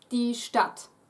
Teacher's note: Ignore the D, it's pronounced exactly as if it were two T's standing there